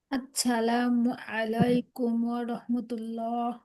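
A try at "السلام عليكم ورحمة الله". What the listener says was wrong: না, আসসালা, সিন, সিনের উচ্চারণটা যেন সবার আসে, হ্যাঁ। সিনের উচ্চারণ, আসসালামু আলাইকুম ওয়া রাহমাতুল্লাহ। হ্যাঁ, এই জায়গাটা একটু সুন্দর করতে হবে। ওয়া রাহমাতুল্লাহ।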